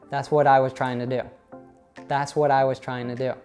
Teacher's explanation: So in English, when a T is after an N, it often gets swallowed by that N.